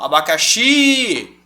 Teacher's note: eu Estiquei a última todas elas são oxítonas